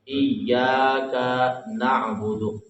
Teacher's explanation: اس میں پہلے ترجمہ تجوید کے حوالے سے میں آپ کو بتا دوں، إياك بعض بندے پڑھ دیتے ہیں اس کو إياك، اس کو لمبا کر کے پڑھتے ہیں، کاف کو لمبا کر دیتے ہیں، حالانکہ کاف کے اوپر زبر ہے، زبر زیر پہ اس کو لمبا نہیں کرنا۔ إياك نعبد، اور نہ ہی یہاں پہ جھٹکا مارنا إياك نعبد وإياك، اس طرح بھی پڑھنا یہ غلط ہے۔